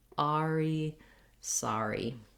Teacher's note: Lightly come in from the ah and go out to the E.